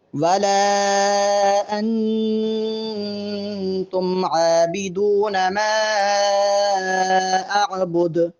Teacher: ولا اور ما پر مد ہے، دونوں مقامات کو لمبا کرنا ہے، اور انتم کے نون پر غنہ کریں گے۔